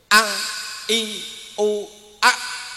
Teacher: makhraj pangkal tenggorokan. Tenggorokan paling bawah, yaitu makhrajnya hamzah dan ha.